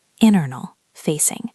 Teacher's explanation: The letter T in internal is often very soft in American English. It almost sounds like internal.